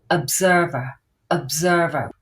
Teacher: that sound of the O and the e r is producing the sound uh